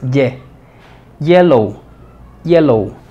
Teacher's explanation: representa el acento en la primera sílaba